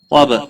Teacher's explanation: با ساکن پر قلقلہ ہوگا